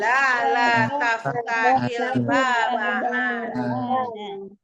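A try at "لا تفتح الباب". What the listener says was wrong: ahsantunna jami'an, qira'atukunna jamilatun jiddan.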